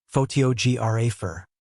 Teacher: photographer is stressed on the second syllable, photographer. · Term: word stress